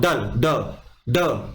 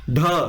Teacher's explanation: ड में आपको कम प्राण लग रहे हैं लेकिन ढ बोलूंगा ढ अंदर से आवाज आएगी हवा आएगी ठीक है तो आपका महाप्राण हो गया वो ठीक है इसको